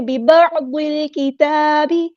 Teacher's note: عین کو مستحلق middle throat سے ادا کرنا ہے، یاد رہے یہاں پہ جھٹکا نہیں آنا چاہیے